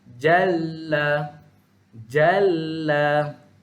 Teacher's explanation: Okey, macam tadi huruf nun, jal. Okey, huruf yang tanda sabdu kita keluarkan dia jadi 2 huruf. Bacaan berganda.